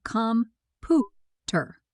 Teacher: The middle syllable is stressed.